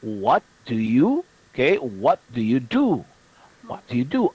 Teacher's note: when u is not at the end of the sentence the vowel sound is often reduced